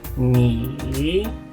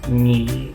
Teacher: El semitercer tono se pronuncia solamente bajando al grave sin ascender.